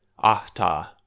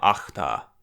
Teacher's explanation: if the H does come in coda position, it fortifies to a voiceless velar fricative. I'm not actually sure if that's just because I'm bad at pronouncing H in coda position, or if that makes sense on its own, but I kind of like the feel of that, so something like ahta would become achta.